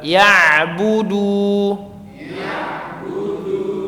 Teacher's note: suaranya tidak berubah menjadi sengau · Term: Ain